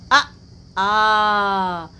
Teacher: आप गले के पास हाथ रखिए और बोलिए अ आ। देखिए यहां पर कंपन हो रहा है। गले में कंपन हो रहा है। अर्थात यह कंठ से आवाज निकल रही है। इसलिए इसे कंठ वर्ण कहा गया है। · अर्थात आ कंठ से उसका उच्चारण हो रहा है